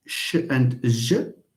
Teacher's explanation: These are plus coronal minus anterior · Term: palatal